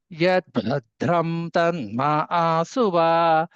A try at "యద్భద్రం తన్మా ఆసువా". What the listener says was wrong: భద్రం ఒత్తు లేదండి. యద్భద్రం తన్మా ఆసువా.